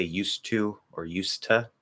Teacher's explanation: Same thing with used to. So what we'll actually do is we'll pretty much drop the D